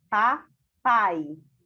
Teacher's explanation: Porque, ó, papai. O i ele é muito pouco pronunciado, a gente pronuncia o a. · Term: semivogal